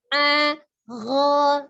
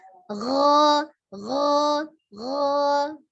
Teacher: tidak berubah ya bentuk mulutnya, hanya perubahan dari al-halqi tenggorokan tengah ke tenggorokan atas.